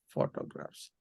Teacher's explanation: PHO in photograph has the stress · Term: first syllable